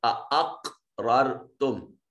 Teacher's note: क़ाफ पर कलकला होगा, रा मुतहर्रक है, मफ्तू है, मुफख्खम पढ़ी जाएगी।